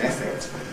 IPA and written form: ˈefekt (effect)